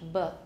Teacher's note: Thai b is like French pretty much, b. Quite strongly voiced.